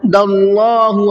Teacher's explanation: را کو منہ بھر کے پڑھنا ہے۔ داللہ، اللہ کے لام کو بھی منہ بھر کے پڑھنا ہے، اس لیے کہ اللہ کے لام سے پہلے زبر ہے